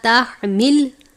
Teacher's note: ہا ہے باریک ہا، حلق سے ادا کرتے ہیں ، جیسے ہم عین کو باریک پڑھتے ہیں اسی طرح ہا